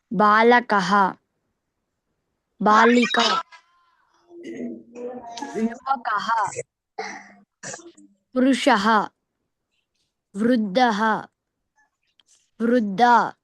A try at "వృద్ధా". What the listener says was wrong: వృద్ధా, దీర్ఘం రావాలి నాన్న.